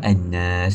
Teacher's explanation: boleh dipanjangkan hingga dua ataupun empat ataupun enam harakat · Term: ma'il sukun